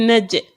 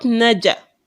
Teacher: it wouldn't be that the jim is being tied up immediately, but it will have a certain kind of sound like an echo or something like that.